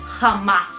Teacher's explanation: We don't pronounce H, but the J sound, la J, is like strong H sound, and you use your throat while doing that